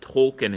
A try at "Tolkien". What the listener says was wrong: I've just never heard the L pronounced that hard.